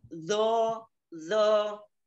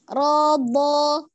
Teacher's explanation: bukan zo tapi do ujung lidahnya tidak keluar